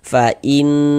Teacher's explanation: Jadi di bagian in-nya itu suaranya itu kita tahan, kita panjangkan sejenak. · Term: gunnah musyaddadah